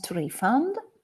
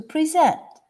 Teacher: the verb get accent on the last syllable